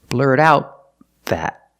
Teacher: The TH in that is a consonant, So the T in out is pronounced as a stop T.